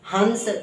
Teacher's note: अनुस्वार का उच्चारण सिर्फ और सिर्फ नाक से होता है, आवाज नाक से गूंजेगी।